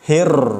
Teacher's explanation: Bismillah, lamnya ditahan sebentar. Kemudian hir, huruf ro ada tasydidnya. Jadi harus ditahan.